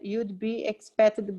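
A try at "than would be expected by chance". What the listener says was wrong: no you'd be, no, would. sounds like who, would be.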